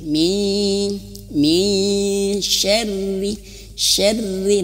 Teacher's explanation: nah nun mati bertem huruf syin maka persiapan ke huruf syin syin itu makhrajnya di tengah lidah sama seperti Jim